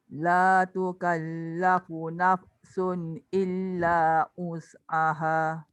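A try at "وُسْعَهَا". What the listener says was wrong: Illa wus, jangan us. Tak jadi. Dia kena tolak daripada bibir. Wus.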